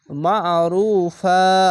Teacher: আইনটিকে মোটা করে পড়বেন গলা চিপে পড়বেন